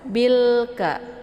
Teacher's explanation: jelas bunyi lamnya atau biasa disebut dengan idhar qamariyah ya. Bilka ya, ditekan saja binya langsung masuk ke huruf kaf.